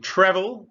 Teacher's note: you see the stress is on the first syllable